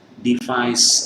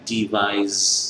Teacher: S kita tahu tadi baru kita terangkan tidak bergetar, dari voiceless menjadi voiced, bergetar